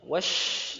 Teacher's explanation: Karena makhrajnya bukan di bibir. Shin itu makhrajnya di al-lisan, di lidah bagian tengah. Ya, jadi monyong atau tidaknya bibir kita itu nggak ngefek, nggak pengaruh sama sekali terhadap huruf shin.